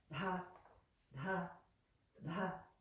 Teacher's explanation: The next one, we have that aspirated sound, that puff of air, da, da, da, but the tongue is on the back of the front teeth and drawn back